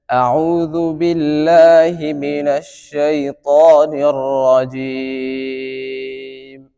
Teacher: আইনের মাখরাজ কন্ঠনালীর মধ্যবর্তী স্থান থেকে উচ্চারণ হবে